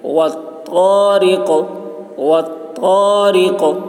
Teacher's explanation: طا کی آواز موٹی ہوگی اور قاف میں قلقلہ، را کو باریک پڑھیں گے